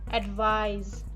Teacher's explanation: Because advice finishes with a sa sound, which is a voiceless consonant, and the previous vowel of a voiceless consonant is pronounced shorter, as in advice. When we have a voiced consonant like za, as in the second word or in the verb advise, the preceding vowel is pronounced longer. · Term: vowel length